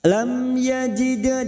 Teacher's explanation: dal sukun qalqalah sugroh yang mati asli di tengah kalimat kita pantulkan